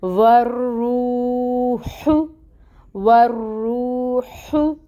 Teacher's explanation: तो इसको 2 काउंट्स लंबा हम पढ़ेंगे रू को, ठीक है। वर्रूह, वर्रूह। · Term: वाव मद